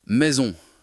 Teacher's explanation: En français, le S entre deux voyelles se prononce comme un Z.